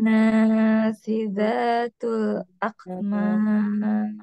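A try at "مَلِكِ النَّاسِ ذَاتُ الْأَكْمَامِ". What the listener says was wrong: Naknya kepanjangan, hati-hati Bu. Naknya kepanjangan. Ketika diwasolkan, naknya jadi 2 harokat aja. Kan barusan ketika diwasolkan kan naknya panjang 4. Tapi ketika diwasolkan, dilanjutkan, naknya jadi 2. Nasi. Malikin nasi datul.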